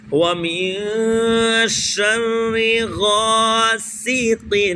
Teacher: سین زبان کی نوک دونوں دانتوں کے اندرونی کنارے سے سین ادا ہوتا ہے · اب غین ہے تو غین کا مخرج حلق کے اوپر والے حصے سے غین، غین اور الف حروف مدہ لہذا اس کو کھینچیں گے تھوڑا سا